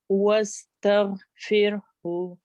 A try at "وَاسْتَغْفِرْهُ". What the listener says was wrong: अच्छा एक तो गाइन को आपने जरा अच्छा सा मोटा करना है और तग कह के ना फिर खामोश होना क्योंकि फिर आपका कलकला बन रहा है तग नहीं तग